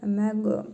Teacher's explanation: Vurğulu tələffüz edirik, qaliqalə edərək.